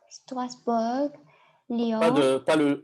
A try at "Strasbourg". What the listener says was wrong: Tu prononces pas le G. C'est Strasbourg. Strasbourg.